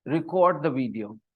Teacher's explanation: when I stress the cord part record then it is a verb